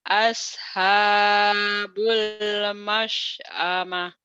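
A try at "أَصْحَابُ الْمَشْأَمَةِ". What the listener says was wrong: bagus tapi shotnya belum nyiut. As, shot, hum as. Tapi mulutnya jangan anginnya jangan banyak, sedikit aja. As, sholat,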